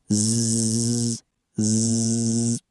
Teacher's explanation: For Z, your vocal cords vibrate. You feel a distinct buzz.